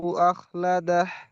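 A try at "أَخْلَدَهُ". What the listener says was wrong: এই সব আপনি হালাদাহ, এই হা নয় গম্ভীরা হা হবে। আখলাদাহ।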